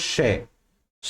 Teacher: श एक तालव्य ध्वनि है। श, श में जीभ का बहुत काम आएगा। श, श जीभ को किसी एक स्थान पर रखकर श नहीं बोल सकते, हम जरूर मूव करनी पड़ेगी।